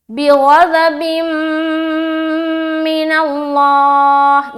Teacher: 2 ज़ेर की तनवीन है, उसके बाद मीम है, तो यहाँ पर इदगाम नाक़िस का कायदा बनता है